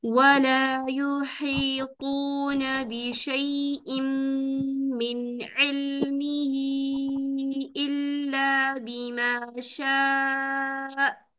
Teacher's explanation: ہا کی ہمس کلیئر ہونی چاہیے